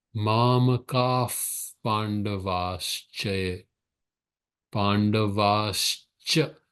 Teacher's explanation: The second Visarga becomes a Sh. Because the Sh is closer to Ch. Sh sound is closer to where the ch, ka is coming from the vocal cords.